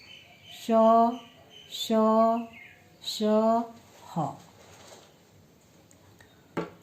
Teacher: उच्चारण में श्वास तीव्रता के साथ मुख से रगड़ खाते हुए बाहर निकलती है, उसे ऊष्म व्यंजन कहते हैं।